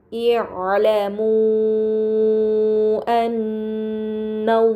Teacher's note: pada kata amu annallaha terdapat mad bertemu hamzah bukan dalam satu kata ini dinamakan mad munfasil maka harus dibaca panjang selama empat atau lima harakat